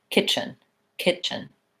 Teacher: it fluently there's not really much of a break there kitchen I think that T is either silent stopped or dropped out entirely and I just do the CH sound